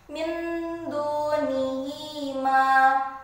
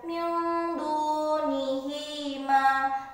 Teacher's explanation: Cara membaca bacaan ikhfa hakiki adalah dalam rongga hidung sampai dengan terlihat samar, atau bisa juga dengan suara eng atau n.